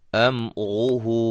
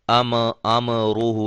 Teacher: मीम को हिलाएंगे नहीं, मीम को हिलाना नहीं है, क्योंकि ये हरूफ कलकला में से नहीं है।